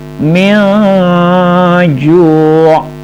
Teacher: Nah, mad tabi'i kasrah diikuti ya sukun, min ju'. Min ju', ingat bunyi dengungnya sedikit samar, berarti apa? Ikhfa.